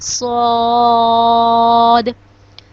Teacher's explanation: صاد کو بھی ہم 5 الف کے برابر لمبا کرتے ہیں